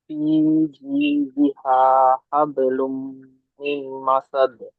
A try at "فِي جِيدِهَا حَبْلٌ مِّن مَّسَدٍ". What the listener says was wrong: মাশাআল্লাহ, আরো এই মিম দুটো আরো একালে একটু বেশি করে গণনা করেন। ফি জিদিহা হাবলুম মিম মাসাদ।